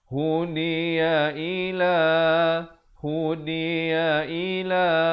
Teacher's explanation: Hu satu harakat, di satu harakat, ya juga satu harakat, i juga satu harakat. La je dua harakat.